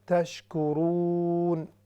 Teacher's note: تشکرون یہ ہے واو مدہ، جب ہم اس پر روکیں گے تو یہ مد عارض لسکون بن جائے گی